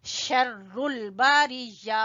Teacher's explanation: हुम शर्रुल बारिया, हुम हा को गले के सबसे आखिरी हिस्से से, शर्रुल शीन, शर्रुल शीन तफशी है, आवाज इसकी फैल जाती है मुंह में